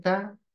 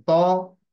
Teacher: ता की आवाज बारीक है, तो की आवाज मोटी है। और फिर इससे माने भी बदल जाते हैं।